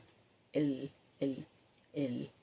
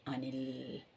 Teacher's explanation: இந்த நுனி நாக்கு வந்து எல் எல் எல் மேலே போய் தொடுது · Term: சின்ன இல்லு